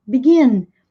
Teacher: E tem duas sílabas, vejam que a ênfase está no gin, begin.